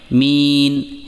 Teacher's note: میم کے بعد یا مدہ کو 2 حرکات کے برابر لمبا کریں، یعنی مین، اس طریقے سے رب العالمین۔